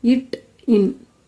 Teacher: நாவின் நுனி அன்னத்தின் நுனியை பொருத்துவதால் பிறக்கும் எழுத்துக்கள்